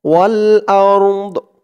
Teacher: সাকিন হয়ে যাবে হামজা দিয়ে র কেও ধরবে দদ কেও ধরবে দদের উচ্চারণটা আওয়াজটা লাস্টে একটু ভাসবে